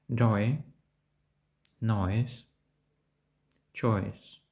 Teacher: Вимовляється подібно до звукосполучення «ой». Вимова починається з голосного «о», що перетікає у короткий голосний «ай». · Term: Звук «ой»